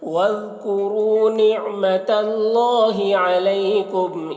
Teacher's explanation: ذال کو باریک ادا کریں گے. را کو پر پڑھیں گے.